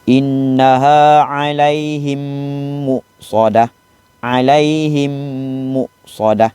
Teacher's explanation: Kalau kamu rapatkan kedua-dua bibir tu, bacaannya adalah sama seperti idgham mithlain. Sebab idgham mithlain ni kamu kena rapat dua-dua bibir kamu.